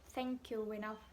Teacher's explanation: Terus dari you ke enough itu bukan thank you enough, bukan enough, tapi thank you enough. Jadi disambungin dari U ke E-nya itu thank you enough gitu.